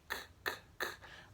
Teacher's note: É um som linguovelar, né? A gente usa a parte posterior da língua, K, K, K, lá atrás, sem pronunciar o motor na garganta, só o som do ventinho.